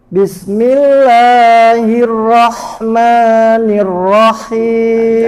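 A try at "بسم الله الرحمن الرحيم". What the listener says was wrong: Jangan terlalu panjangkan mad tabi'i, bukan bismillahi. Bismillahirrahmanirrahim.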